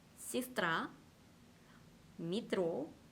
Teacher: 알파벳 예와 야는 강세가 없는 경우 이로 발음이 됩니다